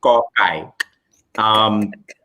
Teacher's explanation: It's an unaspirated K. It's not G.